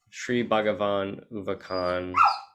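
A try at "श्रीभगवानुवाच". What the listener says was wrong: So that all the C's are cha sounds. Yeah.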